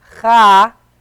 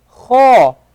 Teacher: We don't say kha, we say kho. So instead of pronouncing the fatha like an a, we pronounce it as an o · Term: round letter